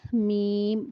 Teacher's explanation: میم، بند ہونٹوں کے خشک حصے سے ادا ہوتا ہے